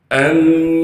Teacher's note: حمزہ کو میم سے ملائیں گے بغیر غننے کے